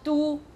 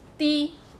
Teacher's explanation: So do is the northern pronunciation. That's the Quanzhou pronunciation. Di is the Zhangzhou, the southern part.